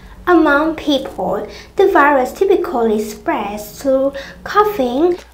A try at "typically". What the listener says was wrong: Okay, typically. Không, mình không bao giờ nói chậm nó thành typically nhá. Mà mình nói luôn thành typically. Typically. Không phải 4 mà là 3. 3 âm trong đấy. Typically. Nghe lại nào, hình như bạn nói sai từ through.